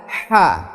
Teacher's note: Kalau di sini ha lebih ke mengarah ke tenggorokan dan mengeluarkan seperti ada angin yang keluar dari tenggorokan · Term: huruf ha